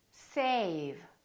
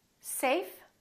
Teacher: notice how a was longer with the V than with the F